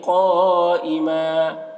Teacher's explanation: الیکا الا ما دمت علیہ قائما، قاف کو پر پڑھیں گے، اور یہاں پر حرف مد کے بعد حمزہ اسی کلمہ میں ہے تو مد متصل ہوگا. مد متصل کو 3 4 الف کے برابر کھینچ کر پڑھتے ہیں. قائمہ، یہاں پر تا وقف مطلق کی علامت ہے، یہاں پر وقف کریں گے.